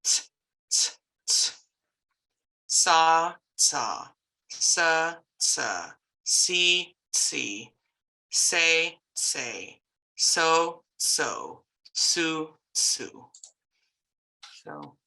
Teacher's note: It's hard to tell, but when you're doing the C sounds, you're going to have that TS. So you should be making the sound of a T before you make the sound of an S. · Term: TS sound